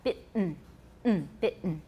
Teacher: In both British and American, the T in bitten is accompanied by a glottal stop.